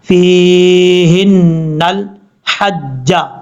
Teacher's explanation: ہے فا یا زیر فی، ہا نون زیر ہن، فی ہن، نون کے اوپر زبر ہے، نون کو اس لام کے ساتھ کنیکٹ کریں گے دوسری لائن کے ساتھ ، نون لام زبر نل، لام کے بعد ہا ہے بریک،